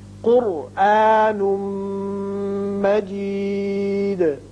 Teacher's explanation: نون کی دو پیش تنوین کو میم سے ملائیں گے، ادغام بغنہ